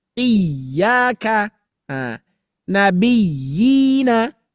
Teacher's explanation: Ya keluar dari bagian tengah lidah dan bagian tengah langit-langit mulut paling atas. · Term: huruf ya